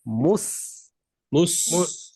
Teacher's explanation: মিমের উচ্চারণ যাওয়ার সাথে সাথেই সিন ধরার আগেই ঠোঁটটাকে স্বাভাবিক করে ফেলবো, তাহলে আর মোটা হবে না